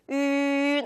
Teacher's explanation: 이때는 굳이 입모양이 바뀔 필요가 없겠죠. 그래서 ün 하고 입모양 동그랗게 유지하고 또 콧소리 낼 수 있도록 연습해 주시면 정확하게 발음할 수가 있어요